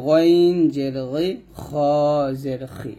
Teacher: গইন খ এই দুইটা গলার শেষ থেকে